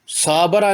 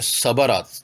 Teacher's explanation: حرکت کی مقدار کی مثالیں: صبرا، صابرا نہیں کہیں گے، اس میں صاد کی حرکت زیادہ لمبی ہو گئی